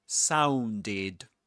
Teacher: The ed ending in the word sounded pronounced as id because the word sound ends with a d sound with a dconsonant. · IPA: /ɪd/